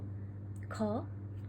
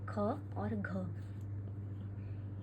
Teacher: कहा जाता है महाप्राण क्या हु प्राण क्या होते हैं हवा महाप्राण क्या हुए मतलब कि अधिक वायु जो है मुंह से निकले